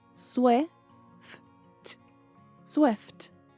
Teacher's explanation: O F e o T são pronunciados quase silenciosos.